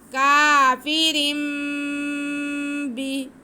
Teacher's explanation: इकलाब क्या है कि जब तनवीन या नून साकिन के बाद बा आए तो हम तनवीन की आवाज़ को मीम में बदल कर पढ़ते हैं